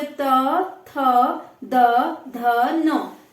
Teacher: तो हमारी जो जीभ है वो दांत पे स्पर्श कर रही है, तो ये दंत्य हो गए